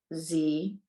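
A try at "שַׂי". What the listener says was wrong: I have to hear all the syllables. It's 2 syllables. Sa'i. Sa'i.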